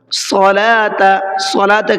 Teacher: صاد کو بھی منہ بھر کے پڑھنا ہے، پر کر کے پڑھنا ہے۔